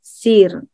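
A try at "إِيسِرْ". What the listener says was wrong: Ada yanya, isir.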